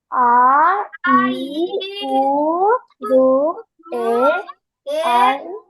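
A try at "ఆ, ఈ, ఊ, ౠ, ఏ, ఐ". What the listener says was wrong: కొంచెం దీర్ఘం తీయండిరా. దీర్ఘం తీయండి వాటిని. ఏ, ఐ. ఓ, ఔ. అది దీర్ఘాలు తీయండి. మనం చెప్పాం కదా, దీర్ఘ స్వరాలు అని చెప్పుకుంటున్నప్పుడు కాస్త దీర్ఘంతో పలకండి వాటిని.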